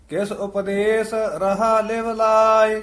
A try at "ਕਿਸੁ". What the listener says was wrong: ਇਹ ਕਿਸ ਪਦ ਪੋਲਾ ਹੀ ਉਚਾਰਨ ਕਰਨਾ, ਕਸ ਕੇ ਨਹੀਂ ਬੋਲਣਾ।